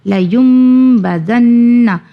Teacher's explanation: یم ہم نے اس لیے ادا کیا، نون کی ادائیگی نہیں کیا، اقلاب کا قانون آ گیا ، یعنی نون ساکین کے بعد حرف با کا آنا اقلاب